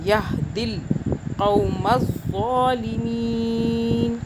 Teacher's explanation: لا یہدل، آگے ہم دی نہیں کر رہے اس لیے کہ دال اور آگے لام کو ہم نے آپس میں ملا کے پڑھنا ہے